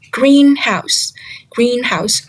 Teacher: The stress falls on the word green.